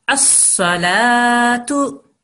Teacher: And make sure you round your make your mouth round and serious because it's a sod. So it needs to be a thick sound.